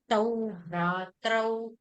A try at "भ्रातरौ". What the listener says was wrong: பிராத்தரவ். நீங்க சொன்னது பிராத்ரவ்ங்கிற மாதிரி கேட்டது எனக்கு. பிராத்தரவ். பிராத்தரவ்.